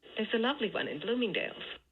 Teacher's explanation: here you hear a peak on both of the stress syllables